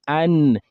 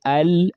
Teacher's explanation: The tip of the tongue part of the lisan the tip of the tongue ma'a lifati ath-thanaya al-ulya touching the gum behind the two front incisors an an just like al but the point of articulation of noon goes you know a bit backward or we say lower. We say al as in lam al then you say an you see it's went a bit back al lam an So, an al You can see the difference.